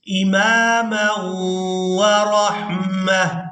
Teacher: میم واو دو زبر مو، غنہ کے ساتھ ادائیگی کریں گے